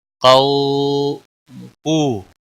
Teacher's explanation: کو واو ساکن سے پہلے پیش ہے، اس لیے واو مدہ ہے ایک الف کے برابر کھینچ کر پڑھیں گے